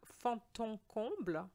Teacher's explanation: I made a liaison between the D of fond and the en sound. Fond en comble, because the D, just like quand, Q-U-A-N-D, which means when quand is followed by a vowel, you need to change the D sound to a T sound, and that's what we're going to do here as well.